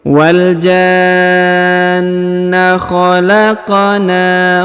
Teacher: Huruf na dipanjangkan 2 harokat karena di atasnya terdapat alif kecil.